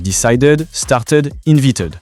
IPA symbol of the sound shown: ɪd